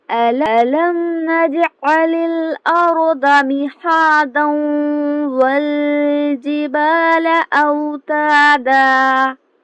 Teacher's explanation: یہاں پر ہم نے اس کو مہادہ پڑھا کیونکہ ہم نے اس کو ملا کر نہیں پڑھا. اگر ہم اس کو ملا کر پڑھیں گے تو دال کو واو میں ملائیں گے, ادغام کریں گے